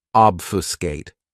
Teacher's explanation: This verb has 3 syllables, and the stress is on that first syllable.